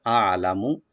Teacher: হামজা শেষ থেকে আসে গলার, আর আইন আসে গলার মাঝখান থেকে